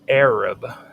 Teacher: In the voiced version, the vocal cords vibrate as air passes through the pharyngeal constriction. · the voiced pharyngeal fricative, which is in the shape of a backwards question mark without the dot at the bottom, appears in words such as Arab